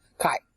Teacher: see your voice ends at the end it's going down